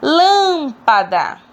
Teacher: nós conseguimos perceber que lan é a sílaba mais forte então eu vou classificar ela como antepenúltima e proparoxítona porque eu